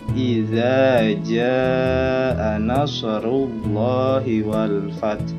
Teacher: Kita bisa lihat ada panjang yang 5 harokat ketukan pada huruf jim.